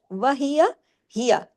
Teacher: یہ دونوں باریک حروف ہیں، ایک ایک حرکت ہے